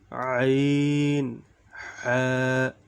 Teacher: 2 নম্বর মাখরাজ, হলকের মধ্যখান হইতে আইন হা।